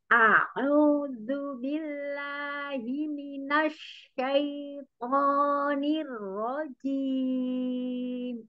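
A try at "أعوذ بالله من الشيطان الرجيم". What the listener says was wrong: Nirro, nirro, enggak nirro, nirro, nirroji, ro-nya tebal ya. A'udzu billahi minasy syaithanir rajim.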